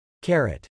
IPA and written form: kæɹejt (Carate)